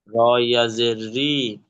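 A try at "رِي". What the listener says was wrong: টান দেবেন একটু, পড়েন।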